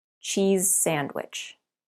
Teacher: When you say the z at the end of cheese, your tongue is behind your top teeth. Leave your tongue there and change to s without moving anything. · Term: linking similar consonant sounds